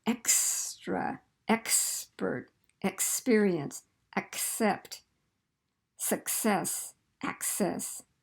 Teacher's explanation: So you got to get that quick K and then that S. It's not k, s, it's ks. Very quick